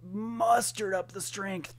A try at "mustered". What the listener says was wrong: Okay, it sounded like you said mustard, not M-U-S-T-A-R-D, not M-U-S-T-E-R-E-D.